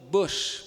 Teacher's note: U, aliás, um pouquinho mais aberto que o U, e um pouquinho mais fechado que o O.